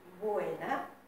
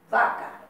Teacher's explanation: diferenciar muy bien la B bilabial de la B labiodental